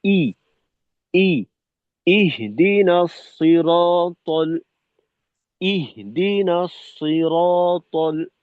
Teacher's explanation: হায়ের প্রভাব যেন পূর্বে থেকেই শুরু না হয়ে যায়, হামজাকে ক্লিয়ার রাখতে হবে।